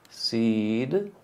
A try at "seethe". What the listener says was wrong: You said a T. Seethe. Because I want you to see tongue behind the teeth, tongue out front. It's going to help you with your D.